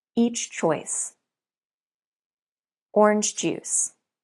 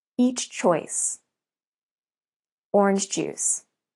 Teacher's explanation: In these examples, you can't link the two consonant sounds. You have to pronounce two sounds. Try to pronounce the second sound immediately after you release the first sound.